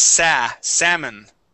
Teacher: The L in salmon is silent. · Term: L is silent